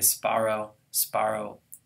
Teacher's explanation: Whether I pronounce it with a p in my brain or a b, it'll end up exactly the same.